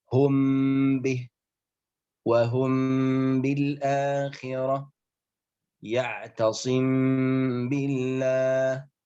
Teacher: إذا جاء بعد الميم الساكنة حرف الباء يجب إخفاء الميم بغنة مقدارها حركتين · أي أن هذا الإخفاء يسمى بالإخفاء الشفوي. لماذا؟ لأن حرف الباء وحرف الميم يخرج من الشفتين